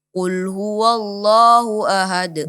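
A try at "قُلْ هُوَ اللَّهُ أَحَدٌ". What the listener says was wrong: Dibuka lagi, dijelaskan lagi wanya. Qul huwallah. Nah, ini di antara kebiasaan kita pengucapan wa di sini terpengaruh dengan tebalnya huruf lafzul jalalah. Padahal huruf wa di sini tipis, tidak dibaca tebal ya. Qul huwallah, bukan huwallah, tapi huwallah.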